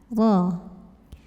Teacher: Karena roknya kita lihat barisnya di atas, fathah. Maka bacanya ditebalkan, pangkal lidah diangkat. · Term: tafkhim